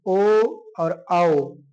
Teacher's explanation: कंठ और होठों को मिला के बोलते हैं ओ और औ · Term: कंठ ओष्ठ